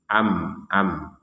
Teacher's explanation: alalikah seperti itu Alal malaikatiqun sukun bertemu ba Ini namanya iqlab Jadi huruf bnya itu ya dibalik menjadi huruf mim